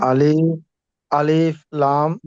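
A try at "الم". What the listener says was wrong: না, আলিফ এটা তো তাড়াতাড়ি হবে, আর লামের মধ্যে লম্বা হবে, 4 আলিফ। 4 আলিফের চিহ্ন দেওয়া আছে এই হিসাবে 4 আলিফ পড়বেন। আর এই যে মিম, এটাও 4 আলিফের চিহ্ন আছে, এটাও 4 আলিফ পড়বেন। আবার গুণনাও করতে হবে।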